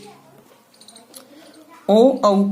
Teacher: ओ और औ का उच्चारण स्थान कंठोष्ठ होता है। न अकेला कंठ होता है न ओष्ठ होता है, अपितु दोनों होते हैं कंठ और ओष्ठ।